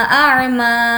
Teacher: अश्तातल ली युरौ अअमालहुम, मीम खड़ा ज़बर मा, अअमा, मा को खींच कर पढ़ेंगे क्योंकि खड़ा ज़बर